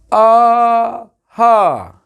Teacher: छोटा बड़ा और हा और विसर्ग ये कंठ से बोले जाते हैं